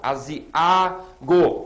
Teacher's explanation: Esse A sozinho é a sílaba tônica.